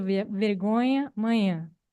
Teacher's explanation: Na passagem de nhã a nhã, nós temos a perda da oclusão, e isso resulta, então, num glide nasal. Esse glide nasal, ele forma um ditongo nasal com a vogal precedente. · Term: iotização